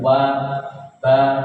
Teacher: wau ba itu huruf ee dari bibir ya